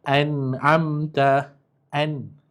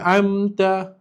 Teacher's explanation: Ain kan huruf halqi tadi. Nun mati bertemu dengan huruf ain. Jadi kita kena jelaskan. Jangan dengungkan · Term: Izhar halqi